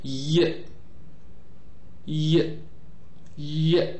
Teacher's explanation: the front part of the tongue is articulating against the hard palate